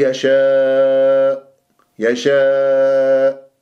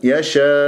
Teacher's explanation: أحد مواضع النبر في القرآن عندما أقف بالكلمة آخرها همزة حتى أقفل الأوتار الصوتية، ماضي عندي الهمزة، أقول يشاء يشاء، ضاعت، لازم يشاء حتى أبين الهمزة، وهذا هو أحد مواضع النبر في القرآن.